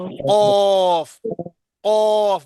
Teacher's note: کوے کے قریب سے نرم تالو سے لگے تو اس سے حرف قاف ادا ہوتا ہے